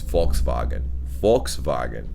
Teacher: the V's are pronounced as F's and the W's are pronounced as V's.